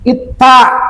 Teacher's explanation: ujung lidah dengan gusi gigi yang atas